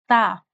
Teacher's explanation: जो हमारी जुबान है उसकी जो टिप है उसको हमने सामने वाले जो दो दांत है उनके अंदर वाला जो किनारा है उधर लगाना होता है।